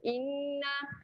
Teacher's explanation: Inna dekat sini ada lagi satu wajibul gunnah, nun yang bertanda sabdu. Jadi kat sini kena dengung dua harakat dan panjang dua harakat.